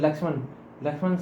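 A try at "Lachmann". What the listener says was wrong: Lakshman था और Lackman था. Lakshman भाई, LXMN, it's Lackman. When it is written there LACH, it is not written LAXMN.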